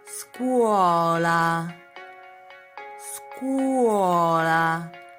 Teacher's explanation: It means many vowels together. And you must pronounce all of the vowels. You have never to contract them, okay? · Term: dittonghi